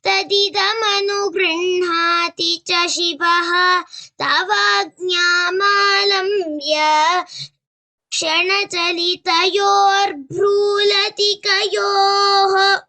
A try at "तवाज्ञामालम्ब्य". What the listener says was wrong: Tavagnamalambya, that should not be prolonged.